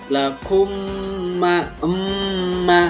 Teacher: emnya itu ada suara dengungan karena mim mati jumpa dengan ma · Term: idgham mimi